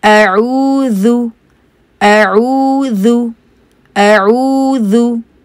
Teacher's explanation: ये हमज़ा है अ और फिर आइन है, उसके लिए फिर आपको मिडल ऑफ द थ्रोट में जाना पड़ेगा